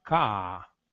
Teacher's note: o britânico vai falar ka, um alongamento da vogal